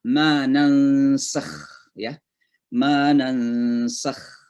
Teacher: Kha itu dari tenggorokan bagian atas.